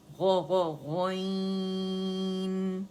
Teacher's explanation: جو ہمارا کوا ہے، وہ زبان کی جو ہماری جڑ ہے اس کو لگے گا